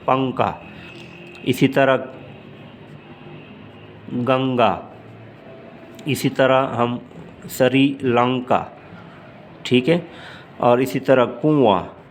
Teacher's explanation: اسی طرح گنگا، اسی طرح ہم سری لنکا، ٹھیک ہے، اور اسی طرح کنواں، تو آواز تھوڑا سا غنہ سے مشابہت رکھتا ہے، ناک میں چلا جاتا ہے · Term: نون شبہ غنہ